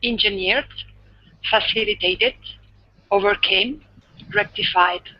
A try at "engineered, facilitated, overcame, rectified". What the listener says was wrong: Nice. Really good pronunciation. That sounded awesome.